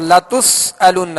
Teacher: सीन में सख्ती यानी सीटी की आवाज पैदा होगी